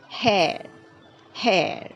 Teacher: the r sound is not pronounced so clearly in British pronunciation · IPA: /eə/